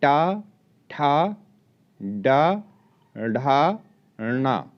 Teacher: मूर्धा और जीभ के स्पर्श से उच्चारित होते हैं, अतः इन्हें मूर्धन्य व्यंजन कहते हैं।